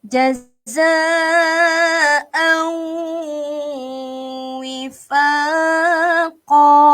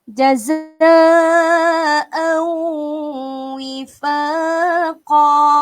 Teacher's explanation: kita masukkan tanwin itu ke dalam huruf waw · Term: idgham ma'al gunnah